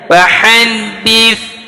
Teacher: lidahnya digigit di antara ujung gigi seri atas dan bawah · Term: tha